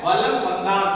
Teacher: ஆக நிலைமொழியின் ஈற்றை தொடர்ந்து இம் என்கின்ற எழுத்தை தொடர்ந்து மகரம் என்கின்ற எழுத்து வந்த கொடுத்தால் நம்ம தனக்குரிய அரை மாத்திரை அளவில் இருந்து குறைந்து கால் மாத்திரை அளவாக ஒலிக்கும். இததான் நம்ம என்னன்னு சொல்றோம், மகர குறுக்கம் என்று சொல்கின்றோம்.